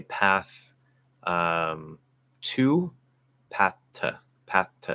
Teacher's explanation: so to reduces to ta